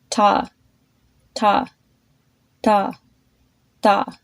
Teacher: notice how it's getting softer and lighter